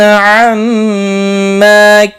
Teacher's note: عما میم مشدد پر غنہ ہوگا، الف مدہ بھی ہے، ایک الف کے برابر کھینچ کر پڑھیں گے.